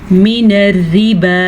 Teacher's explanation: یہ را باریک پڑھی جائے گی کیونکہ اس را کے نیچے زیر ہے